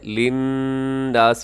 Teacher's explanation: وہاں غنہ ہے کیونکہ وہاں نون مشدد ہے